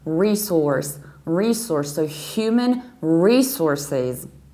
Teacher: in the American accent we stress the very first syllable, re, and then we have very strongly colored resource, resource, so human resources.